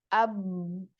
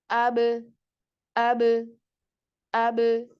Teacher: pengucap ya contohnya huruf ba ya Ba Itu kan mengucap ee mengucapkannya adalah dengan cara merapatkan kedua bibir AB Nah tidakah itu ee suaranya terkunci AB lalu lepaskan ab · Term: Qalqalah